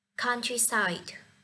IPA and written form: ˈkʌntrisaɪd (Countryside)